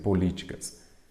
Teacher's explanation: Uma proparoxítona, porque a sílaba tônica é a antepenúltima